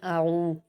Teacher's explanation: आइन पर वाव मद्दा है, दो हरकत खींच कर पढ़ेंगे।